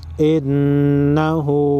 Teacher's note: نون زیر ان نون زبرنا ان ہا الٹا پیش ہو انہو نون مشدد پر غنہ کریں گے